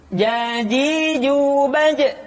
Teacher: menyentuhkan tengah-tengah lidah dengan langit-langit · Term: huruf ja